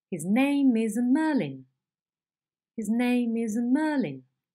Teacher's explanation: It is a series of level steps, each one lower in pitch than the previous syllables, but they are all steady, okay? There is no drop in pitch with a movement downwards, but a steady step down. It is again marked with a stroke, but instead of 1, you will need more than 1 because you have more than 1 accent. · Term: stepping head